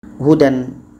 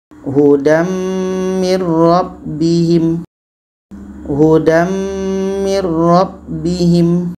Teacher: Tanwin bertemu dengan mim, hukumnya idgham bi gunnah. Kita masukkan bunyi tanwin kepada mim. Itu yang namanya idgham.